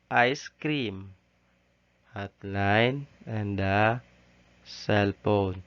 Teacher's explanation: 2 syllables, both of which are stressed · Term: spandi